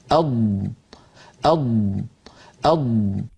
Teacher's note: ضاد کا مخرج، اض اض اض، ملاحظہ فرمائیں کہ ضاد زبان کی اطراف یا کنارے اور ان کے ساتھ جو اوپر داڑھ ہیں اس سے ادا ہوتا ہے